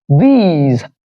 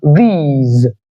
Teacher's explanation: there's a long E in the middle, and the end part, you feel the vibration of the vocal cords, which tells you that the end part is being realized as Z. So we have these.